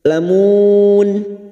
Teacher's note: dibaca waqaf Mad Arid sukun empat harakat kita panjangkan